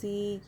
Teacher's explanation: یا مدہ ایک الف کے برابر کھینچ کر پڑھیں گے.